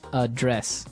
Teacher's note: But you pronounce it differently. So the verb address has the stress on the second syllable.